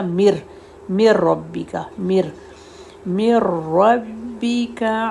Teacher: را پر تشدید ہے، کیونکہ میم ڈائریکٹ را سے ملے گا، نون 100% کوائٹ ہو جائے گا، من ربکا سے بن جائے گا مر ربکا